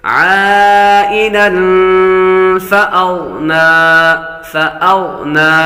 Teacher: تنوین کے بعد فا حروف اخفاء میں سے آ رہا ہے. غین حروف مستعلیہ میں سے ہے پر کریں گے